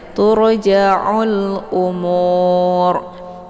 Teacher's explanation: Mad Arid sukunnya dibaca panjang boleh 2 4 sampai 6 harakat harus konsisten dengan nafas dan untuk bacaan rnya dibaca tebal ya karena huruf yang di · untuk bacaan ra-nya dibaca tebal ya, karena huruf yang di belakangnya yaitu waw sukun ya, maka ini dibaca tebal umur ya, dengan posisi pangkal lidah naik ke atas. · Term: mad arid lis sukun